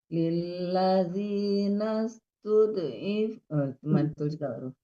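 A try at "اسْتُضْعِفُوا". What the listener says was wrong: Masih mantul. Jangan dilepas. Kalau dilepas mantul dia. Tud, ifu. Kalau tud, dilepas itu namanya jadi mantul.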